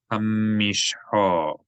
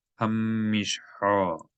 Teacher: There's a dagesh in the mim, so you geminate the mim. You elongate the consonant sound of the mim.